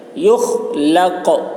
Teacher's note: یخ خا حلق سے ادا کریں گے